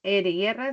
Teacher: Las vibrantes, R y R son sonoras